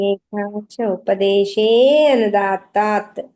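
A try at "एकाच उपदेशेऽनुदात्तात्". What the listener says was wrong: ఉపదేశేనుదాత్తాత్. ఆ అనేది పలకొద్దు అనమాట, అందుకే అవగ్రహ చిహ్నం పెట్టారు అక్కడ. అది పలకమని కాదు, అందులో అక్కడ అకారం ఉంది అని తెలుసుకోవడానికి, అంతేగాని పలకమని కాదు అది.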